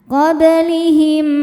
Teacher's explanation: Karena mim sukun ketemu mim hidup. Cara bacanya mim yang pertama dimasukkan ke mim kedua kemudian dengungkan qoblihim. Boleh juga disebut idgham mutamilain karena dua huruf yang sama persis makhraj dan sifatnya bertemu. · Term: idgham mimi